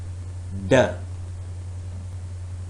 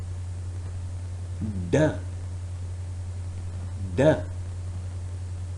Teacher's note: The tongue is completely blocking off airflow through the mouth. There is also no airflow through the nose. It is oral stop. · Yes, it is touching, the tongue tip is touching the alveolar ridge. So the first dimension tells us that this sound, which is D sound, is alveolar sound.